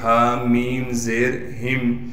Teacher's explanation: ہا کو میم ساکن سے ملا دیں گے بغیر غنہ کے